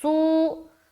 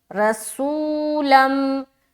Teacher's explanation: اس کے بعد سین واو پیش، سو میں ہم واو مدہ کر رہے ہیں، واو ساکین اس سے پہلے پیش